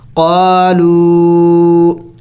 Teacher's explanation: وہ لو واو مدہ پر چونکہ چھوٹا سا مد بھی ہے تو اس کو تھوڑا سا اور بھی زیادہ لمبا کرنا ہوگا